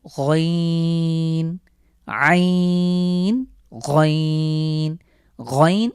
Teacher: আইন এবং হা এই দুটির মাখরাজ সেম সুতরাং আমরা আইন কন্ঠে চাপ দিয়ে উচ্চারণ করব